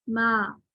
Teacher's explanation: الف جو ہے وہ باریک ہی پڑھا جا رہا ہے یعنی استفالی حالت میں